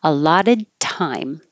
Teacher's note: For allotted, the tongue will go to the D position and just stop and hold the airflow. And then when you release it on the T, then you'll hear the air.